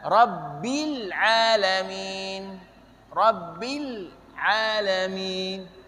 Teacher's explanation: Jadi posisi huruf lam, lidahnya, ujung lidah digusi, bukan di langit-langit.